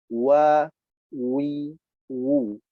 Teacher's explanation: Harakat fathah, kasrah, dhammah, semuanya harus dalam bentuk dimonyongkan bibir kita. Ya, mencucu ke depan, dimonyongkan. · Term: huruf waw